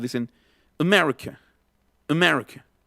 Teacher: No abren la boca totalmente al final y al principio. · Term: schwa